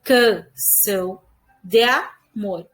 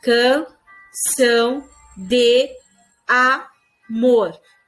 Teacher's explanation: Percebe que o D mais A foram juntados ali, o som? Então, para a poesia, é como se fosse uma sílaba só.